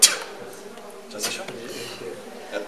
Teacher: And the way you make it is like a T, or a normal T, but then you just build up a lot of pressure, and then go T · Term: ejective